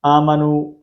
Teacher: ایک الف کی مقدار کے اندر الف حمزہ کو ہم کھینچ کر پڑھیں گے